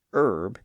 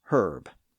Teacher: in British English, the word herb followed along with most of those other French words and also picked up an initial h sound, thereby becoming herb.